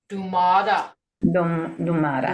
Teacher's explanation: Remember, in Tomato. Muskogee, your T sounds like a D. So it's going to be tomata.